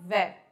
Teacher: ऊपर वाले दांत नीचे वाले होंठ पे टच होते हैं। किसी के ज्यादा लंबे होंगे तो ज्यादा टच हो रहे होंगे, किसी के बहुत छोटे होंगे तो हल्के टच होंगे, लेकिन टच जरूर होंगे। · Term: दंतोष्ठ